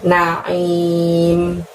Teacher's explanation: Di naim nunnya bertasydid, maka anin nin ditahan dulu baru lanjut ke membunyikan naim. Aim dari tenggorokan kita ditutup dengan huruf M, maka langsung mulutnya juga kita tutup.